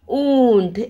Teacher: जैसे कि मुंह से बोलने के साथ साथ हमारा वो स्वर नाक से भी गुजरता है, मतलब उसका स्वर का उच्चार नाक से और मुख से दोनों से होता है, उसे अनुनासिक स्वराक्षर कहते हैं या स्वर चिन्ह कहा जाता है, ठीक है।